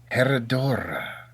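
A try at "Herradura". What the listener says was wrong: Come on, boy, roll them R's.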